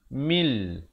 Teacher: Di sini asalnya mim baris bawah bertemu nun bunyi min. Tapi bila datang lam, mil.